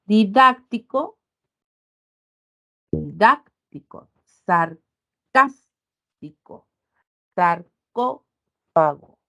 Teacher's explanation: la mayor fuerza de voz con la que nosotros pronunciamos esta palabra se ubica en la antepenúltima sílaba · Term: palabras esdrújulas